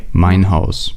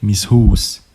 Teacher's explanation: Swiss German maintains the monophthongs of Middle High German.